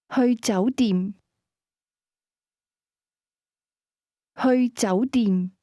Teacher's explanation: Hotel is pronounced with a combination of mid- rising and midlevel tones